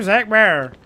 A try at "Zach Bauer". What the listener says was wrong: No, it's Bauer. Bauer. There's a W in there. No, that's power. Power.